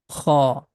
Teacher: This sound is coming out from the beginning of the throat.